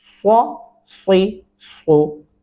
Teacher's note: स्वाद और स्वाद पढ़ते हुए होंठों की जो शक्ल है वो गोल शेप में हो गई